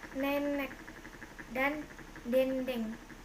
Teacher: Vokal E, kriterianya vokal depan sedang bawah tak bundar semi tertutup